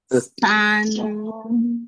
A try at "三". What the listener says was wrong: kurang naik dong. Shan kayak bilang Ashan. Iya, ya harus Ashan tuh yang terkenal di sini. Shan kayak gitu ya, diingat-ingat.